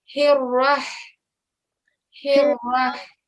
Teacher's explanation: So ha is actually one of your throat letters. And the sound of the ha comes from the middle of your throat.